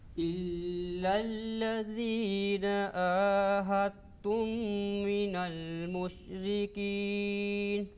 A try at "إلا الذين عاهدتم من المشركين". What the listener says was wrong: Okay, ayn more.